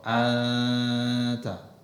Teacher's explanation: nunnya ada tapi enggak jelas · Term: samar-samar